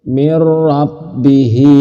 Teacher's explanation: terdapat ra masuknya tanpa berdengung.